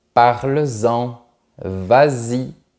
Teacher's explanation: Quand tu as le pronom EN ou le pronom Y, eh bien, tu remets la lettre S pour avoir une liaison mélodieuse.